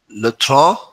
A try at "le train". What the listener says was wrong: You're making a little bit on. It's un.